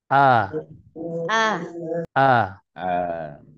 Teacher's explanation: Coba silakan dilafazkan huruf hamzah dari pangkal tenggorokan